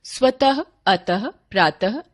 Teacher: विसर्ग का उच्चारण अघोष ह व्यंजन के समान होता है।